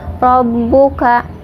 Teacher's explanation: di atas ba ada tasydid, jadi bacanya agak ditekan